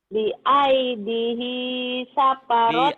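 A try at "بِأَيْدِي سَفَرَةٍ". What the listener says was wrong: Bi aidi gak ada hinya.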